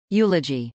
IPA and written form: jˈulədʒi (eulogy)